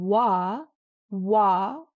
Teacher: And if you say wah, wah, it's a completely smooth start.